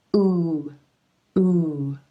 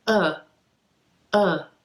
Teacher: different from the ooh as in blue which is more tense the lips really round out away from the teeth as you do the ooh as in blue and make a tight Circle ooh ooh whereas the uh uh is much more relaxed you